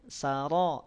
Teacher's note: ro panjang dua harakat keluar dari ujung lidah dan tebalkan suaranya saro tafkhim pangkal lidahnya naik Han Han diucapkan dari tengah tenggerokan